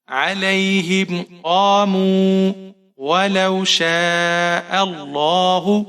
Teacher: یہاں پر آپ شین کو 5 حرکات کے برابر یا 6 حرکات کے برابر کھینچ کر پڑھیں گے، بڑی مد ہے.